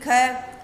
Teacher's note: क में किसकी ध्वनि आ रही है पीछे? अ की। तो वो आधा क प्लस अ मिलके क्या बनाता है?